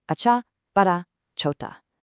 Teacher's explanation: especially that breathy cha sound in chota and the crisp ah in acha. Acha, bada, chota.